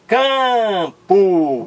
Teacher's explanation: o m de Campo não é consoante não é fonema é apenas um sinal de nasalização da vogal anterior dizendo que esta vogal aqui é nasal